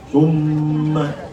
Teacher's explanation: Yaitu membaca dengung. Dengung itu atau lamanya 2 harokat. Summa. Jadi 2 harokat itu kira-kira 2 hitungan. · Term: gunnah